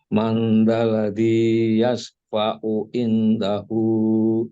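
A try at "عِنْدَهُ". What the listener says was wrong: Ini kurang, Pak. Indahu. Panjangin, Pak. Jangan lupa.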